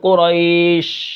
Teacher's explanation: جب ہم شین کو ادا کرتے ہیں تو منہ کے اندر آواز پھیل جاتی ہے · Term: تفشی